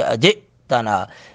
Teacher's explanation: جیم پر تھوڑا سا جھٹکا لگائیں گے حمزہ ساکن ہونے کی وجہ سے